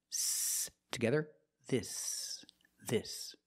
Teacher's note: open I and you make a short sound I this and the S is a true s there's no voice there's no vibration